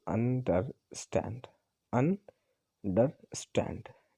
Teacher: अब यहाँ पे स्टैंड की बात करें तो स्टैंड जो है ये स्ट्रेस्ड हो गया और अंडर ये दोनों जो है ये अनस्ट्रेस्ड सिलेबल हो गए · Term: एनापेस्ट